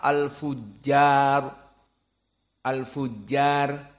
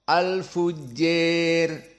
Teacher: Kemudian al-imalah al-kubra condong ke kasrah